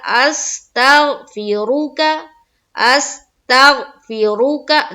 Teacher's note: देखिए रा को हम पुर पढ़ रहे हैं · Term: रा को पुर